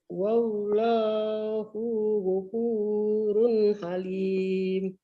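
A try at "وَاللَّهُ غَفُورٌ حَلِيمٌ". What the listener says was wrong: Hu-nya pendek ya. Wallahu ghafur. Wallahu ghafur. Run. Idhar ya. Wallahu ghafurun halim.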